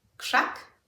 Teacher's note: The K has influenced the RZ, making it sound like a sh rather than ż.